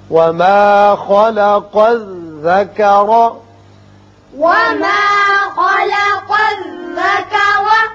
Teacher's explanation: خا پر ہوگا، قاف کو بھی پر پڑھتے ہیں. یہاں را کے اوپر زبر ہے، اس کو بھی پر پڑھیں گے